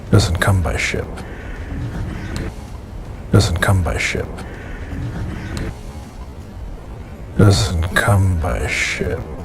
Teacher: notice a downward intonation or singing pattern at the end of the sentence